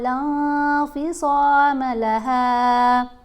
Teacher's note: نون کی آواز کو ہم نے ناک میں چھپا کر پڑھنا ہے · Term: اخفا